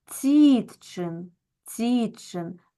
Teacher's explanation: в слові цітчин наголос падає на і